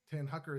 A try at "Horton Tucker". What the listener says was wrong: Horton Tucker. Tucker Horton. It's the opposite.